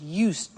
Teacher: I said used with a T sound